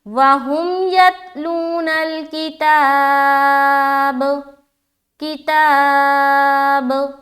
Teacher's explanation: اگر کوئی یہاں پر پڑھتا ہے وَهُمْ يَتْلُونَ الْكِتَابَ تو قلقلہ نہیں ہوا، جو کہ غلط ہے قاعدے کے مطابق۔ تو ہمیں اپنی آواز کو ٹکرانی ہے با پر اسٹاپ ہوتے ہوئے